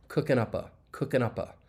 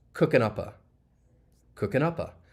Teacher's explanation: we can link the final P sound in up with that schwa sound in the article